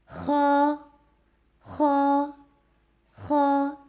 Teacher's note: خ کے ادائیگی میں حلق کے ابتدائی حصے سے ادا ہوگا اور خ جو ہے وہ موٹا پڑا جائے گا.